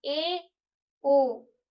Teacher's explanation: अर्ध संवृत थोड़ा सा खुला हुआ ए ओ इससे थोड़ा सा मुंह खुल रहा है।